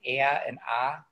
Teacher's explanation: we say like very strong, like ah and ah sounds that are also a bit more nasally